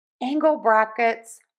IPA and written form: ˈæŋ.ɡəl ˌbræk.ɪts (Angle brackets)